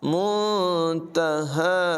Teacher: الی ربک منتہاہا، نون ساکن کے بعد تا حروف اخفا میں سے ہے، یہاں پر اخفا ہوگا، یعنی نون کو ظاہر نہیں کریں گے، من نہیں پڑھیں گے، بلکہ نون کی آواز کو ناک میں چھپا کر ادا کریں گے، یعنی منتہاہا، ہا کی آواز بھی حلق کے نچلے حصے سے ادا ہوگی۔